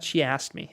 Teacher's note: Es más como, no pronunciamos tanto la K